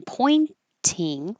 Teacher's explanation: make the T pointing or you can skip the T because when the t comes after the n and it's in the unstressed syllable you can just make the in and not release the air flow